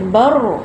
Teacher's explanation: Tapi kalau huruf-huruf lain, contoh macam ra kan, bar, kita tak tahu tu ada sabdu ke tak ada. Jadi nak cakap dia ada sabdu, kena naik sikit suara, bar. Baru nampak.